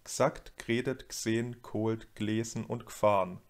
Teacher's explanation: Immer wird das unbetonte e, das sogenannte Schwa, getilgt.